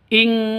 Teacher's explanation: In kuntum. Nun mati bertemu dengan kaf, samar didengungkan, siap-siap ke huruf kafnya. Nun matinya ditambah dengan ng. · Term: ikhfa hakiki